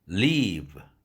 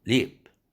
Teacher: leave 할 때의 모음이 leap 이거보다 더 길어진다는 것이죠.